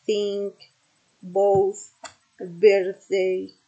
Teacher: Voiceless, which means it is produced without vibration of the vocal cords.